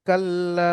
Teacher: পড়তে হবে যেহেতু ওখানে থামসন ওচ্ছেন তারপর দেখেন কাললা আলিফের ডানদিকে লামের উপর জবার আলিফ মাদ এক আলিফ পরিমাণ টান হবে